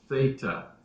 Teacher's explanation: The tongue comes between the upper and lower teeth, and we say theta.